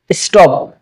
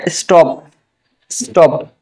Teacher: ঠ এর মতো হবে না, ট এর মতো হবে